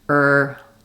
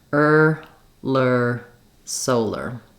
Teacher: you just keep the back of the tongue ready for the R and sneak that L forward. Just a little lift with the back of the tongue kind of still in the R position.